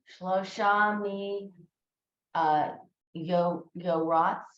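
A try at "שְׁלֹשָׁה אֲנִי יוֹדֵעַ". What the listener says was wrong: This is a Dalet.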